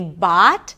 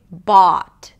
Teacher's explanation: Bought is a long open ah sound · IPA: /ɔː/